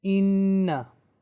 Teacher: it will be recited with gunna, which means reading with nasal sound